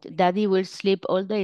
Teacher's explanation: pueden ver que tiene una voz trémula y también tiene problemas de tonalidad